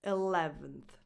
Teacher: And the last vowel is a schwa, unstressed.